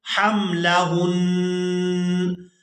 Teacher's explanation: یہاں پر بھی آپ لوگ علامات وقف دیکھ رہے ہیں، تو وقف کی صورت میں ہم نون پر غنہ کریں گے، لیکن اس کے اوپر جو زبر ہے اس کو ادا نہیں کریں گے وقف کی صورت میں۔